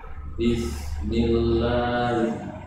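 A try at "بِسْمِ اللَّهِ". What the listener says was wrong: Sinnya kurang. Ya, bis. Huruf sin mempunyai sifat rokhwah, hamas, dan sofir. Di situ saat keluarnya berbarengan.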